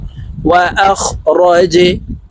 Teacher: জিম কলকলার হরফ, নিচের দিকে ধাবিত করে ধাক্কা দিয়ে উচ্চারণ করব।